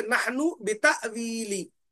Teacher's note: जैसे कि नहनु बिताविली, नून साकिन के बाद अगर बा आ जाता, तो यहां पर हम इखलाब कर लेते। लेकिन नून मुतहर्रिक है यानी हरकत वाला है, उसके बाद बा आने की वजह से हम यहां पर गुन्ना नहीं करेंगे, बल्कि नून का इजहार करके पढ़ेंगे